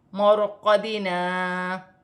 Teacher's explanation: یہاں پر را ساکن سے پہلے زبر ہے تو را موٹی پڑھی جائے گی